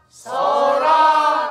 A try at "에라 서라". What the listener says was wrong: 음이 처지면 안 되죠 제가 자기 음으로 다 가야 돼요 애라서라 그리를 마라 시다 서라